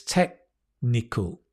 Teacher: I just realized the K almost disappears. It's not technical, it's technical.